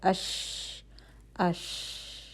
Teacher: تفشی کا مطلب یہی ہے کہ آپ کے منہ کے اندر آواز اور ہوا جو ہے وہ پھیل رہی ہے۔ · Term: تفشی کی کوالٹی